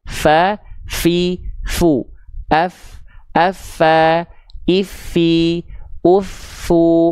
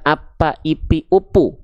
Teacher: Ingat, huruf fa saya izin ingatkan jangan jadi huruf P. Huruf fa itu dilafalkan harus ada keluar nafasnya.